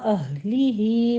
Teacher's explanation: अहली ही में अक्से हलक से निकालना है हा को आपने, लेकिन याद रहे कि हा के ऊपर कलकला नहीं करना। ही में मद्दे सिला सुगरा है, यहाँ 2 काउंट करेंगे।